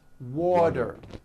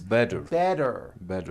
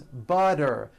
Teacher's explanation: the tea turns into a d and the whole word is voiced